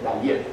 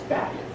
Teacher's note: Bayith is on the next to last syllable.